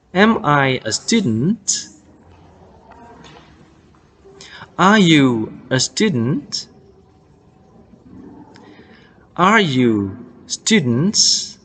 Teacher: Nah, rising intonation. Di akhir dia naik ya.